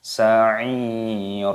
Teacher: Ini dibaca mad tabi'i, dua ketukan saja, jangan panjang-panjang.